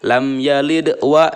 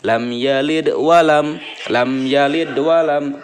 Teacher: memantulkan huruf qalqalah tetapi dengan ringan dan menyambungkan dengan bacaan setelahnya. Jangan lepas di situ, tapi kita ada pantulan dan dilanjutkan dengan menyambungkan dengan bacaan setelahnya. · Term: qalqalah sugro